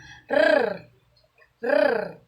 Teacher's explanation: mabilis na pagdikit at pagtanggal ng dila sa gilagid. Ganito. R ito ay may tinig. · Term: pakatal